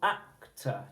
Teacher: You would go up on the first syllable